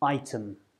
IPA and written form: ˈaɪtәm (item)